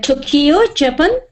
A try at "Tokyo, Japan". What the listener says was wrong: Now, the correct stress pattern of those is not quite the same as you read it. It's like Tokyo, Tokyo, and Japan, Japan. Sometimes it's important to get the stress on the right syllable, you see.